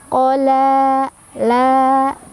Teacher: La mad tabi'i karena ada fathah berdiri di atas huruf lam. Cara bacanya dibaca panjang 2 harokat